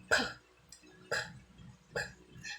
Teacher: Kung mapapansin natin ito ay walang tining. Hindi ito nagba-vibrate. Parang may maliit na pagsabog.